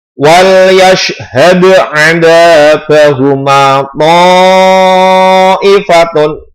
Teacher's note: To-nya ini panjangnya 5 harokat atau panjangnya 4 sampai 5 harokat atau bisa dihitung dengan 5 ketukan.